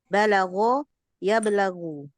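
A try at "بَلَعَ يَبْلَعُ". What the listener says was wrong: Itu lebih pas bala'ah ke ain itu. Bala'ah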